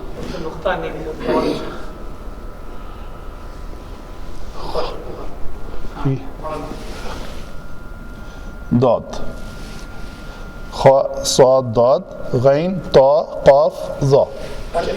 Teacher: ये जब भी हरूफ तहजी के ये 7 हरूफ पढ़े जाएंगे इनको पुर पढ़ा जाएगा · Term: हरूफ मुस्तालिया